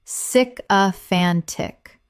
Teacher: Four syllables with the stress on the third